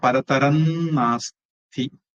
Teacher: அனுஸ்வாரம் அடுத்தது நா வந்ததுனால அந்த அனுஸ்வாரம் இன்னா மாறும். இப்போ பரதரன் நாஸ்தி, நாஸ்தி நாஸ்தின்னு மாறும்.